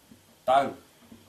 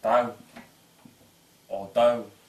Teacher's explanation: Например, таг, гора. Тут именно передняя щелевая Г, не задняя.